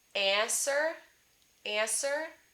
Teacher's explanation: sir and so sometimes i hear people say answer answer so they're nasalizing the ah and because they perceive the sound ah as nasal they don't make the n sound